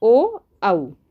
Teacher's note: अब कंठोष्ठ, तो कंठ और ओष्ठ से मिलकर, यानी कि गले और होठ से मिलकर हिंदी वर्णमाला के कुछ वर्ण ऐसे हैं जिनका उच्चारण करते समय कंठ और ओठ का इस्तेमाल होता है। इस तरह जिन वर्णों के उच्चारण करते समय ध्वनि ओठ यानी कि होठ और कंठ से निकलती है, उसे कंठोस्थ वर्ण कहते हैं।